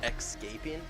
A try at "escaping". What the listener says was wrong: no X in escaping.